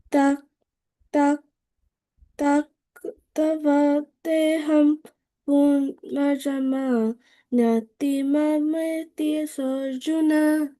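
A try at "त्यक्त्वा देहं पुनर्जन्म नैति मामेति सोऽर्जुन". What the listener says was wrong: Okay, so the one word that I think you had issues with was tyakta, right? Okay, so when you see like TVA, you don't make the sound of a V. It would become like the V would become like a TWA, so it'd be like taktwa.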